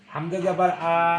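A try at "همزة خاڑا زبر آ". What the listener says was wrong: ওটা জবর নয়, খাড়া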